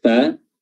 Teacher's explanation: perut bibir bawah bertemu dengan ujung gigi seri atas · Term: huruf fa